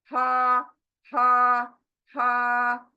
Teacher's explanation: हमजा सीने से, ये दोनों सीने से